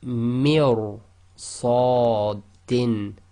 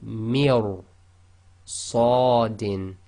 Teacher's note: you've got to go straight from the mi, which is empty mouth, directly into ra, which is full mouth · So ra sakin preceded by a kasra sound but followed by one of the tafkhim letters. In that case the ra will still be heavy tafkhim.